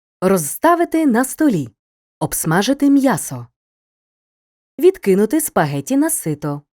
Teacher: у префіксах від ов над роз без під кінцевий дзвінкий приголосний не змінюється перед глухими